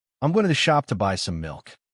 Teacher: Notice how to becomes almost a tuh, how the is barely a whisper.